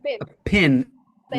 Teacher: In many places, the word pin and pen are said the same way. They just say pin for both.